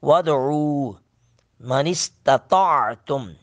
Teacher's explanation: سین پر سٹی کی آواز آئے گی